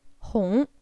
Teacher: that is the rising tone similar to the tone you would use to ask what in English